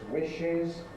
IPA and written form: ˈwɪʃɪz (wishes)